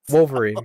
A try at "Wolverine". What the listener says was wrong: I can't tell if you're saying the L or not. Wool. Wolverine. more heavy on the O, like woven, like Wolverine. And I'm saying wool. going into the L. Wool.